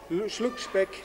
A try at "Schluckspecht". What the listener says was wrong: Schluckspecht. Ja, Specht. Nicht Speck.